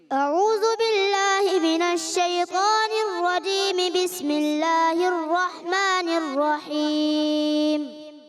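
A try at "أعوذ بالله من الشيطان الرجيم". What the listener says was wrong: بیٹا جب تعوذ پڑھتے ہیں نا تو اس میں اعوذ باللہ پڑھا جاتا ہے، اعوذو نہیں پڑھنا. ٹھیک ہے بیٹا، اس چیز کا خیال رکھنا ہے.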